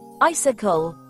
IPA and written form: ˈaɪsɪkəl (icicle)